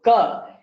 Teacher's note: ka is made all the way in the back of the mouth